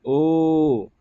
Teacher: कंठोष्ठ, है ना। ओ, कंठ से भी इसका उच्चारण स्थान हो रहा है और ओठ भी सट रहा है ना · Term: कंठ ओष्ठ